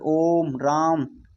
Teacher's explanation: ओम जो खींच के बोला जाए उसे क्या कहते हैं? प्लुत स्वर।